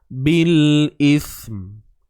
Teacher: Matikan sa keluar hujung lidah, kemudian last kali tutup bibir untuk menyempurnakan huruf mim tu.